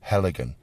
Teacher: they put the stress on the first syllable